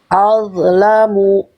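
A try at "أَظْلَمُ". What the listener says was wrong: Jangan kasih mantul dho sukunnya. Jangan al-dho. Al-lamu.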